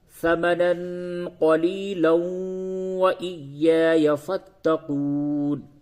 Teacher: تو اگر ملا کر کے پڑھتے ہیں تو پھر اس واو کے اوپر تشدید آپ کو بنانا پڑے گا. یعنی کہ نون ساکن اور تنوین کے بعد حروف یرملون میں سے واو آ گیا، تو یہاں پہ ادغام مع الغنہ ہوگا، تو اس جگہ پہ ادغام جب کریں گے تو واو پہ تشدید آ جائے گا.